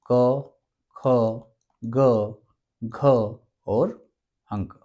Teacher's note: एक वर्ग है क वर्ग, जिसकी ध्वनियां कंठे से निकलती है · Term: कंठे ध्वनियां